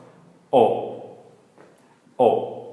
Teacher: Don't forget it's a short low tone. O, and we know it's short because of this here.